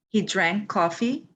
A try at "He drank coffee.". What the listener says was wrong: Okay, because when you said it, it sounded almost like we. He drank coffee.